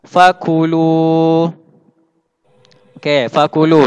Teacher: Lu situ panjang. Awak kena baca 2 harakat.